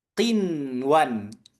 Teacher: ada nun sakin ketemu wau bukan kita membacanya dengan qiw melainkan Qinwan. Maka kalau ada yang baca dengan qiwan, dia terjatuh pada lahn. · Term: izhar wajib